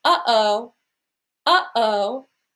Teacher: glottal stop so often I have people say uh-oh uh-oh and feel how you stop those vowels using the throat uh-oh in between those two syllables we feel that little impulse